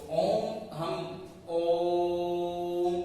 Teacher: और मां, यानी कि ओ को हमें 3 गुना ज्यादा लंबा बोलना है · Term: प्लुत